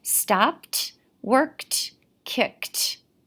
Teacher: the e d and kicked makes that t sound